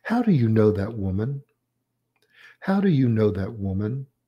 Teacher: The down intonation on woman, or said down, falling.